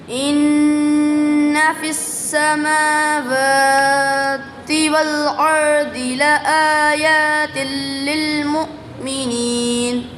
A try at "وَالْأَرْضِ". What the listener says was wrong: वल अर्दी यहाँ पर द्वाद है, द्वाद की अदायगी मुकम्मल करेंगे, दाल नहीं पढ़ेंगे। द्वाद पुर है यानी इसको मोटा पढ़ना है, दाल बारीक होता है तो द्वाद को पूरी यानी मोटा पढ़ना है, ठीक है। इन्न फिस्समावाति वल अर्दि लआयातिल लिलमुमिनीन।